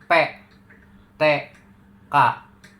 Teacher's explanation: Jadi pita suara tidak bergetar. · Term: tidak bersuara